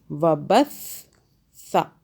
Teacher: اور سا کو سافٹ کرنا، زبان کو باہر کریں پھر ادا کریں